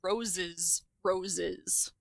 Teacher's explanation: I am, if anything, likely to say roses, roses, and end up with two kit vowels. But for some people, they would say roses, roses, and that would be the same thing.